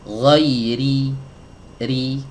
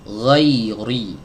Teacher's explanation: ketika kita mengucapkan huruf ro yang tipis, maka bagian belakang lidah ini tidak boleh ditegangkan